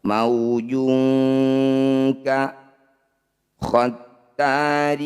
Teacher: Bunyi tanwinnya bunyikan dengungkan 2 harokat. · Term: ikhfa ab'ad